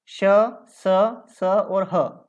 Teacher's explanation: इन वर्णों का उच्चारण स्थान के साथ प्रश्वास वायु के घर्षण से होता है, मतलब जब इनका उच्चारण करते हैं तो एकदम अपनी जो श्वास निकलती है बाहर, वो घर्षण के साथ बाहर निकलती है, इसलिए इनको ऊष्म व्यंजन भी कहते हैं।